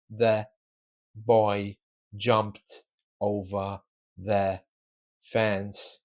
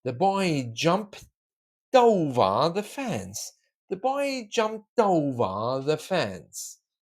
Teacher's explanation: Boy jumped over, but we join the D and the O.